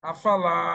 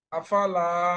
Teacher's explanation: আ তেও টান নাই ফা তে টান নাই আপনি দ্রুত আ এবং ফা কে দ্রুত উচ্চারণ করে লা তে চলে আসতেছেন